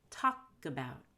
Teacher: when you say talk about you want to hold the k talk and let out a g talk about class today we